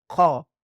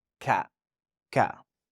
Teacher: Ka is lighter, and we can say ka in English, but this one is qa, okay? So qa, and it comes from the end of your tongue, qa, and this one is closer to the tip of your tongue